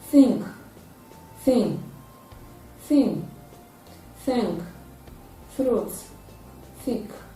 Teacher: Therefore, it is a dental sound. It is a voiceless dental fricative sound. Its spellings is realized in TH.